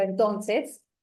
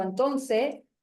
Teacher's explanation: nosotros como región o como regionalismo tendemos a aspirar esas s Entonces no decimos por ejemplo entonces Y esa s la digo